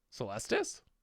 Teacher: this stress is on the second syllable not the first one